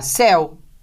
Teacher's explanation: Tem o ditongo de som aberto, você acentua.